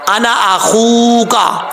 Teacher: ख्वा हुरूफ मुस्ताला में से है, पुर पढ़ा जाएगा। और वाव हुरूफ वाव जो है ये मद्दा है, वाव साकिन से पहले पेश हो तो वाव मद्दा होता है।